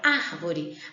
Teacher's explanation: Quando eu falo a palavra árvore, a sílaba que sai com maior intensidade é ar. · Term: sílaba tônica